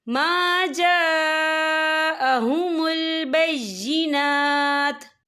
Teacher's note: وقف کی صورت میں تا جو ہے ساکن ہو جائے گا